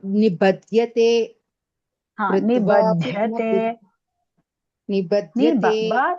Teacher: Ba is alpa prana and dha is mahaprana.